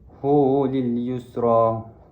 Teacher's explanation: Hu di sini adalah mad silah qasirah dibaca dengan kadar dua harakat kerana selepas ha dhamir ada macam wau kecil di situ.